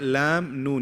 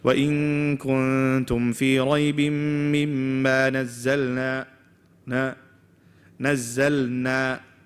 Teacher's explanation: If you try it, lam, noon, you'll see your tongue is moving back. But because they're so close, if you read it fast and you don't move your tongue, what happens?